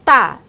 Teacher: O T, né, o tá, é uma consoante oclusiva, dental, desvozeada